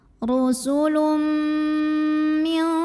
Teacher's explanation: Karena ada tanwin dhammah yang bertemu dengan huruf mim, maka tanwin dhammahnya masuk ke mim. Bukan rusulun tapi rusulum m dan tahan bunyi m-nya. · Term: idgham bi gunnah